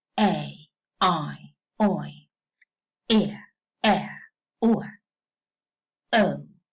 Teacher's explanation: the first element is more prominent than the second one the second one is slightly sounded